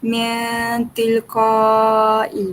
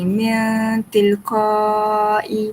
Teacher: cara dia berdengung dengan mendekati bunyi nun, lalu suara ditahan 2 ketukan. 2 ketukan tu 2 harakat lah macam tu. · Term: ikhfa